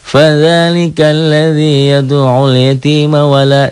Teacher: Kalau dibacanya di wasol, disambung, gak ada yang panjang di sini.